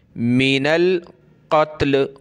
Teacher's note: ये नून लाम के साथ मिलेगा, नून लाम ज़बर नल